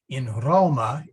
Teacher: that regular a became a long a